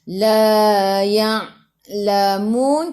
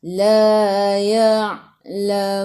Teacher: Masuk ke dalam ain yang ada sukun. Ingat ain daripada kerongkong, bukan daripada hidung.